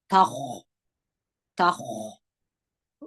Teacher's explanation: خا باندې به خوله یو څه راټوله کړي. خا د درنو تورو څخه ده. د خا او د ح درمنځ یې مه وایست.